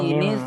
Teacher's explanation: নুন সাকিনকে ছোট মিমের দ্বারা পরিবর্তন করে একালিফ গুন্না সহ পড়তে হবে।